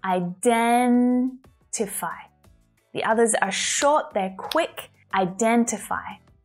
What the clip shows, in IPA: aɪ'dentɪfaɪ